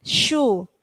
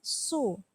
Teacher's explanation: Nah, jadi antara syu dengan su itu berbeda. Syu itu ada hembusan apa? Angin, syu. Tapi kalau su itu hanya di lisan, su. Ya.